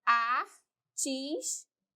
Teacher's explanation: Antepenúltima mais forte. Aqui é uma proparoxítona.